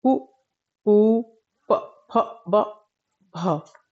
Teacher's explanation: इनके उच्चारण में दोनों होठ आपस में मिल रहे हैं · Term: ओष्ठय व्यंजन, ओष्ठीय व्यंजन